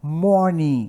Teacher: palavras com a terminação ing, a gente nunca vai pronunciar o G